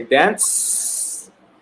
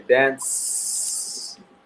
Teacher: when the last sound is unvoiced, you add a T sound